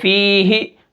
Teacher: یا ساکن ہے، پیچھے زیر ہے تو یہ فی ہی، ٹھیک ہے، اس کو ایک الف کے برابر کھینچ کر پڑھیں گے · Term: یا مدہ